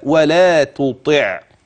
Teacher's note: لكلمه تطع التاء والطاء مره ثانيه تاتين وكلاهما من مخرج واحد التاء والطاء والدال كل من هذه الثلاث تخرج من محل واحد من طرف اللسان مع اصول الثنايا العليا